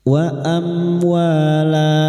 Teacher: Mim sukun dibaca jelas tanpa mendengung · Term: izhar syafawi